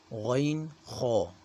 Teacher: غین خو جو ہیں یہ حروف جو منہ کی طرف حلق کا حصہ ہے وہاں سے ادا کیے جاتے ہیں